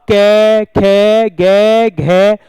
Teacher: इनका उच्चारण कंठ से होता है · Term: कंठीय